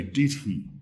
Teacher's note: But when we're reading a story, we probably would say did he. We would probably stress both words in a way that both were clearly pronounced.